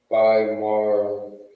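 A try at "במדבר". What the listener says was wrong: You are mistaking the da for the ra. Yeah, I mean, the connector would be the ba, so it would be alone.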